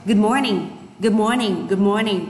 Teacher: cái âm đầu tiên thì âm đờ không đọc là good morning nữa. Và chúng ta bỏ đi luôn ạ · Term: omit